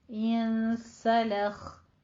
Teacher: لام باریک رہے گا، لوخ نہیں کہنا